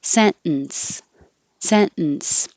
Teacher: you don't have to say the t because your tongue is going to the end position which is the same as the t position sent and just hold it there and make the in noise